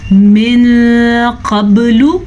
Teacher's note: یہاں پہ اخفا کا قاعدہ ہو رہا ہے کیونکہ نون ساکن کے بعد حروف اخفا میں سے قاف آیا ہوا ہے تو ہم یہاں پہ اخفا کا قاعدہ کریں گے.